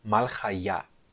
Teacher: A sílaba tônica é a sílaba ya no final.